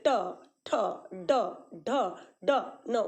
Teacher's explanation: ये मूर्धा ऊपर जीभ स्पर्श कर रहा है